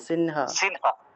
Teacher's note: মাঝখানে অনুস্বার থাকলে আমরা ন এর মত করে উচ্চারণ করতে পারি